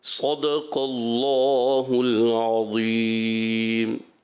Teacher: ہاں، صدق اللہ العظیم میں آپ نے جو صاد یہ صحیح پر نہیں کیا، آپ نے اس کو باریک صدق اللہ العظیم، صاد بھی پر، دال باریک، قاف پر، اللہ پاک کا لام بھی پر کرنا ہے، پھر ضا بھی.